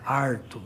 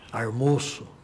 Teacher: o famoso R retroflexo, que é típico da área caipira